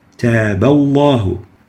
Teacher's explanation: the letter ba has a fatha, so the lam has to be velarized with tafkheem.